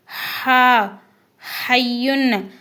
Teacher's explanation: ஒரு காற்று வெளியேறும் போதே அந்த ஹா உடைய சத்தமும் வெளியேறும்